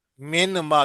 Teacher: نون جو ہے میم میں مل جائے گا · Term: ادغام